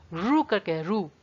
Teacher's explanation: तो आपको अपनी जीभ थोड़ी सी मोड़नी ही पड़ेगी। तो इसका जो सही उच्चारण स्थान है वो है मूर्धन्य।